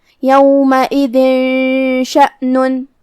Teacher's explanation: الاخفاء میں سے ہے، اخفاء کا معنی ہے چھپا دینا، تو ہم یہاں تنوین کو بغیر ظاہر کیے ہوئے لیکن غنہ کے ساتھ یہ حکم کو ادا کریں گے